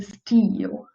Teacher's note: when i pronounce the e sound my jaw is a bit tense like and the space between my tongue and the roof of the mouth is quite small